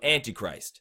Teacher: there's a stress on the ant and there's a stress on the I